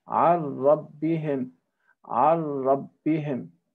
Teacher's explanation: you see the noon is totally absent or dead. This type of idgham is called complete idgham, complete merging, because the noon has totally disappeared, or the noon sakin has completely disappeared.